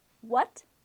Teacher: It sounds like a question word in English. What? It's a rising tone.